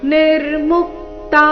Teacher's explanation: ನಿರ್ಮುಕ್ತ ಮು ಮೇಲೆ ಆಘಾತ